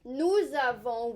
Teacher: normally we do not pronounce the s but we will because we have a vowel we'll pronounce it like a z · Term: liaison